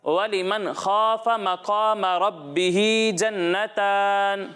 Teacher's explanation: बाज़ बच्चे कौफ को बारीक पढ़ रहे हैं, यहाँ कौफ है इसे मोटा पढ़ना है। इसी तरह बाज़ बच्चे रा को बारीक पढ़ रहे हैं, रा को मोटा पढ़ना है, ठीक है।